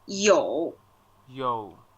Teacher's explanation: which is the third tone, which is the falling raising tone.